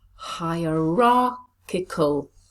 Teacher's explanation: Where is the stress? Hierarchical. Yes, it's on the third syllable.